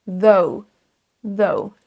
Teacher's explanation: Vous avez le son TH comme le mot précédent, the, et ensuite on a un son O et un son OU juste après.